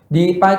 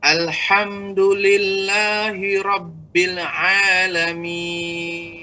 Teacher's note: Dipanjangkan 5 harokat, Pak ya. Jadi pada mat arid sukun.